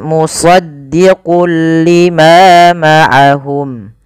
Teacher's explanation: Pada lafal shad, shad itu harus ditebalkan karena dia punya huruf namanya sifat isti'la tafkhim ya.